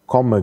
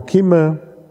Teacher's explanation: Das O ist hinten, das I ist vorne, aber das O ist auch in der Mitte und so.